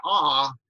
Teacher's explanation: when you say ah your tongue position is low so we call vowels like ah and in english ah low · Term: low vowels